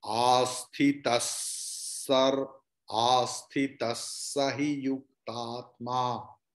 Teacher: Here asthita, after that visarga is there, but afterward sakara is there. So visarga's pronunciation will be like sakara. You can cut it and put half sakara.